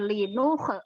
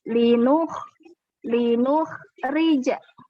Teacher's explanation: Kho itu dia kasar tapi tidak boleh dipantulkan.